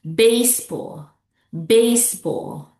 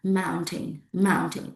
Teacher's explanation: Put the stress on the first syllables.